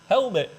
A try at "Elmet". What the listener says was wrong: No, Elmet. It's the Yorkshire version of saying helmet, just no H.